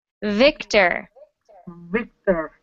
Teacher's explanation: if you make it a voiced sound, so you vibrate, you bring your voice out at the same time, it becomes the V sound. V, and you really got to bite your lips when you make that sound.